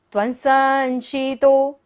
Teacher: बिंदी के बाद क्या है? स, तो बिंदी का उच्चारण क्या होगा? न।